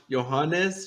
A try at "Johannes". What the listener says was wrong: Yeah, it's spelled Johannes, but you would just pronounce it as Johans.